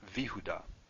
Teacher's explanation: So before a yud with a vocal shava, before y, you get V. It changes to V.